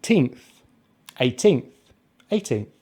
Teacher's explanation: with 18th we just say the diphthong a as in pay